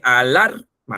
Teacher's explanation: la sílaba tónica de la palabra alarma no está en la primera A, sino está en la segunda A